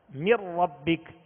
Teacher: اب نون ساکن کے بعد چونکہ را آ گیا، اب نون کو را میں ملانا ہے. مر ربک، اب اس کو من ربک غنہ نہیں کریں گے.